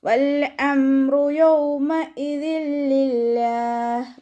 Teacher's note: ലാമ് കൽക്കലയുടെ ലെറ്ററില്ലാത്തത് കൊണ്ട് ഹാഫ് സുക്കൂന് കൊടുക്കുക. ഹംസയുടെ മഖ്റജ് അഖ്സൽ ഹൽക്കാണ്, സൗണ്ടിനെ വ്യക്തമാക്കി കൊടുക്കുക. മീമ് കൽക്കലയുടെ ലെറ്ററില്ലാത്തത് കൊണ്ട് ഹാഫ് സുക്കൂന് കൊടുക്കുക.